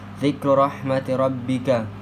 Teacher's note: Huruf ra dibaca tafkim sebab berharakat dhammah dan kasrah.